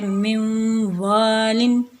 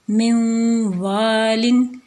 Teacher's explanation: اسی طریقے سے نیکسٹ جو اگزامپل ہے وہ ہے من والن، تو یہاں پہ نون کو واو میں انٹر کر رہے ہیں